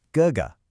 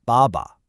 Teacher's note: the second syllable is unstressed. It's lighter and shorter. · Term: neutral tone